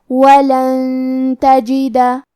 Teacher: کلمت ولن کے آخری میں نون ساکن ہے، پھر حرف تا آتا ہے. کلمت تجدہ تا حروف الاخفاء میں سے ہے تو ہم یہ حکم کو غنہ کے ساتھ ادا کریں گے